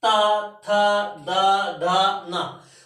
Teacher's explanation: आपकी जीभ दंत को छूती है, तो इसको लिख सकते हैं दंत।